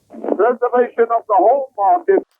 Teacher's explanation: You'll notice there's no R sound in his pronunciation of preservation and market. preservation of the home market He rolls R's between vowels, as in labour and labour and industry, especially foreign.